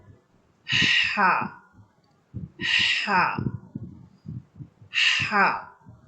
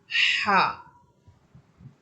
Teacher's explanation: তাহলে আমরা হাফের মাখাজ পেলাম যে হাফটি কন্ঠনার মধ্যখান থেকে উচ্চারিত হবে। এবং আমরা যখন কন্ঠনা মধ্যখানের জায়গাটাকে হালকা একটু চাপিয়ে পড়বো তখন এই হাফটি সুন্দরভাবে আমরা পড়তে পারব।